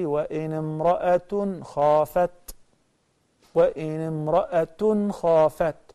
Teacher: There will be ta, we call it ta marbuta, like a circle with two dots on top. This ta marbuta, when we connect it, it will be pronounced as ta.